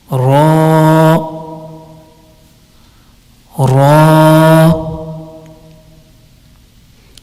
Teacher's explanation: Ra is pronounced when the edge of the tongue touches the gums of the upper four front teeth, and it will be Ra, Ra.